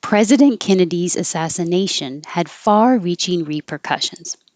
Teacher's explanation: And I changed the S in president to a Z to remind you that it's a Z. And the possessive Kennedy's will also sound like a Z.